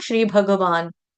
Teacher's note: हमें ग को हलंत नहीं गाना है। ग को पूरा गाना है।